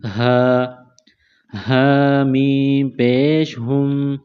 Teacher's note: منہ سے ہوا نکالنے کی طرح ہا کو پڑھتے ہیں